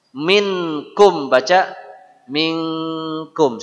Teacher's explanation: n itu bunyi Eng hanya pada dua kondisi nun sukun ketemu Kaf nun sukun ketemu qof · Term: ikhfa